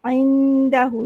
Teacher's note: dal ni dia hujung lidah kita mengena kepada gusi atas